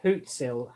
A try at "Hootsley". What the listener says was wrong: Hootsley. Yeah, you said Hootsel. Hootsley.